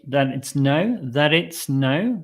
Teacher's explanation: the T can drop and it sounds very smooth